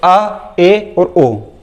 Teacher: अ, ए और ओ, ये जो 3 स्वर हैं, ये जब आप बोलते हो तो अर्धविवृत के अंतर्गत आते हैं।